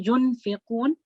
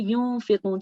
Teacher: So we hide the noon sakin sound. And obviously the nasal sound comes with it.